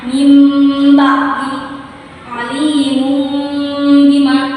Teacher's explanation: Nah, jadi huruf iqlab atau iqlab ini dia mengubah atau menggantikan suara ba menjadi suara mim